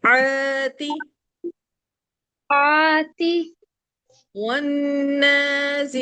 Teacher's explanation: ہونٹ گول نہیں ہو، ہونٹ آپ کے اسمائل کی طرح رہیں گے